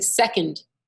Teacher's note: if you're saying second, the accent is on the sec, not on the und.